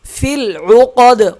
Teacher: قاف موٹا ہوگا، دال پہ قلقلہ ہوگا